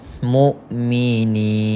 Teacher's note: mad asli, baca panjang dengan kadar 2 harakat